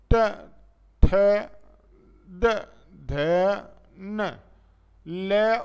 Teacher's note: इनके उच्चारण में जो जीभ होती है वो दांतों में लगती है कहां लगती है दांतों में स्पर्श करती है त वर्ग का